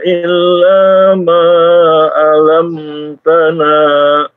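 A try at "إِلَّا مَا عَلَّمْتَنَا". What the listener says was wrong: Illa ma'allam. Iya, dari ain ke lam, masuk ke lam itu ada tasydid, sehingga agak sedikit dimasukkan ya, ditekan. Alam. tidak alam tanah, tapi alam tanah, ya.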